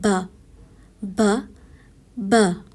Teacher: با سختی سے ادا کیا جانے والا حروف ہے. با ہونٹوں کے گیلے حصے سے ادا کیا جانے والا حروف ہے